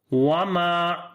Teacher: mim we long due to alif madda, because before the alif there is fatha on the mim, so this is a reason of longing mim here.